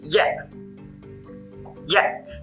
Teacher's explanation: También aparece una glotal al final.